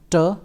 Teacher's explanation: during the production of t, the active articulator is tip of the tongue and the passive articulator is the teeth ridge. So, during the production of t, which is alveolar sound, the teeth ridge is not moving at all, but the moving part is the tip of the tongue.